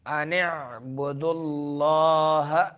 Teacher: عین کو درمیان حلق سے ادا کریں گے